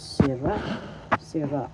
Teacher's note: the second syllable is the accent · First syllable si, second syllable ra. The second syllable has the accent, so you pronounce this sira.